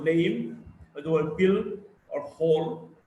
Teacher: L is a voiced alveolar lateral.